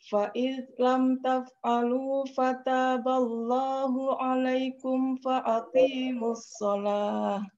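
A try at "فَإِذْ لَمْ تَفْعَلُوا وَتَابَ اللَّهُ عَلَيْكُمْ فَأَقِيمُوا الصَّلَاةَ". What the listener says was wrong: Fa'id lam taf'alu wa taballah baru fa'aqimus sholah. Fa'id pakai fa'id lam taf'alu wa taballah. Setelah itu fa'aqi. Alaikum Fa'id lam taf'alu wa taballahu alaikum fa'aqimus sholah. Yang pertama dimulai dengan fa, yang kedua wawu, yang terakhir fa. Fa'id lam taf'alu wa taballahu alaikum fa'aqimus sholah.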